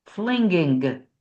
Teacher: See, I made that hard G at the end.